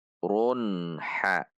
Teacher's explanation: Ro dhummah tanwin Run dhummah tanwin di depannya huruf ha maka tanwin ini dibaca izhar halqi jelas tidak dengung tidak memantul dan tidak terpisah